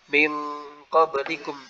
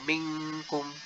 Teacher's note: kalau huruf ikhfa pada huruf qaf dan kaf, nah ini lebih mirip dengan ng